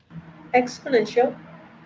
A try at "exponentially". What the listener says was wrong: you just just uh just left off the last bit the lee exponentially